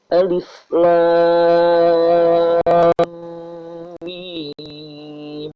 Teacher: Agar ditahan karena ada harokat tasydid pada huruf mim.